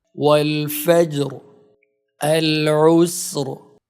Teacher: Here, Ra becomes Saakin because we stop at the end. Before it is a Saakin letter, and before that letter there is Fatha or Dammah. Because of this, the Ra is pronounced heavily.